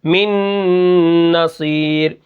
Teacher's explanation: یہاں پر دیکھیں نون ساکن کے بعد نون آ گئی، تو وہاں پر میں ادغام کر رہا ہوں